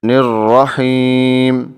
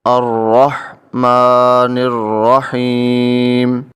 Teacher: نون کے نیچے زیر ہے تو نون کو را سے ملائیں گے، نون زیر را، نر، را زبر را، نر را، ہا زیر یا حی، نر رحی، میم زیر می، نر رحیمی۔